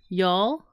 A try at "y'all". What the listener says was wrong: It sounds like you're saying yowl, but y'all.